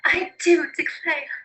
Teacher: The Southern aristocracy also adopted R dropping